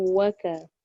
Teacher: Waw dengan waw tak dengung. Waka tu dia masuk je waw pertama kepada waw kedua tapi tanpa dengung.